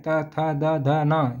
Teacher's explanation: जिन ध्वनियों को उच्चारण ऊपर के दांतों पर जीभ लगाने से होता है उसे दंत ध्वनि कहते हैं।